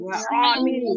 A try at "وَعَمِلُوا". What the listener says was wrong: खींच क्यों रहे हैं आप लोग? आइन पर हरकत है ना, नहीं खींचेंगे उसको।